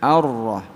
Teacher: Ra itu di ujung lidah. Dia punya sifat takrir, ngeder, ya, bergetar. Ar. Tapi ndak boleh, getarnya ndak boleh lama-lama.